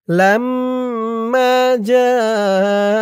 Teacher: জা চার আলিফ টান মধ্যে মুত্তাসিল